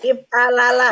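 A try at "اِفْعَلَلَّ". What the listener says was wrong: Ya, if a lala pakai tasdid belakangnya. If a lala.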